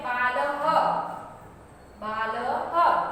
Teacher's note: उसका ये जो विसर्ग है उसका प्रोनाउंसिएशन कैसे होगा, ह बोला जाएगा। क्या बोला जाएगा, ह।